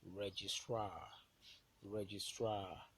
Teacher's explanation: Stress on the last syllable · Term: ultimate syllable